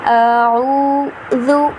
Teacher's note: ذال پڑھے ہیں اسے ہم نے بہت ہی نرمی کے ساتھ ادا کرنا ہے